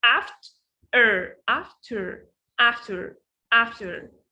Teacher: So the first part here is very, very stressed and strong.